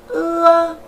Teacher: Âm ưa cũng là một nguyên âm đôi gồm có âm ư ghép với âm a. Âm ư đứng trước, âm a đứng sau, tạo thành một âm, đó là âm ưa.